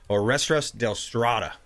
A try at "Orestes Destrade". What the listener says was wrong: You got to roll the R's.